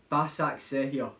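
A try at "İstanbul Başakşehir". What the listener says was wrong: No, you forgot to pronounce the first name. No, Istanbul. Istanbul, Basakesir, FK.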